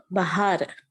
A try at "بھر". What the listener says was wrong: بہار نہیں، ہم دیکھیے یہاں آپ وے پلس ہے، خالی ہے مل کے کیا ہو جاتا؟ بھر ہو جاتا. تو اس طرح سے ہم کیا کرنا ہے یہاں پر؟ بھر.